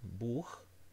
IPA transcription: bu:x